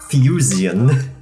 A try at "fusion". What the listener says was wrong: That's the most syllables I've ever heard in the word fusion.